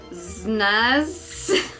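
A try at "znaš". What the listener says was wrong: There's a V on the S, so it's znash.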